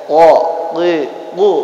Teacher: pangkal lidah dihempitkan ke langit-langit atas, keluar huruf qaf